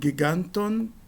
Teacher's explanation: o acento avança porque a vogal da última sílaba é longa